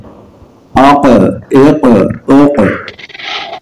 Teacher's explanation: حروف قاف چونکہ قلقلہ بھی ہے، کتب جد میں سے ہے، اس لیے یہاں خوب قلقلہ کریں گے۔